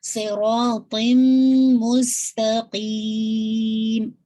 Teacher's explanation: تن کے بجائے تم کی آواز آئے گی, ٹھیک ہے. تنوین کی آواز کمپلیٹلی میم ساکن کے اندر مرج ہو جائے گی, اور پھر آپ اس کو 2 کاؤنٹ ہولڈ کریں گے ود غنہ کے ساتھ, ٹھیک ہے.